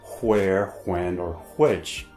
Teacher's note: hardly anyone pronounces the H sound in words such as where, when, or which. So they're pronounced where and when, and which and which have become homophones.